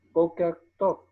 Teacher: Boker, y encontramos no solamente unas, unos signos vocálicos, sino que también está un acento marcado sobre la primera sílaba, Boker Tov.